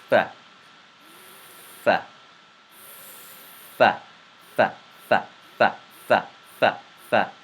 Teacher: The lower lip comes in contact on your top front teeth, and you say fa.